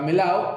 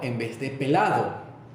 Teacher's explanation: Se suele perder el fonema D, que es la intervocálica melao, en vez de melado.